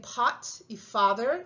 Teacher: Tienen otra A diferente en pot y father, entonces aquí ya ven que esta A ya es un poquito más atrás